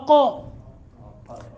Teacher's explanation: حلقہ وہ حصہ جو منہ کی طرف سے ہے، تو قافی وہاں سے نکلتا ہے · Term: ادنائے حلق